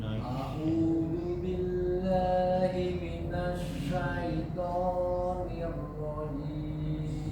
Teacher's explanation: baca sya lebih di anginnya lebih disebar lagi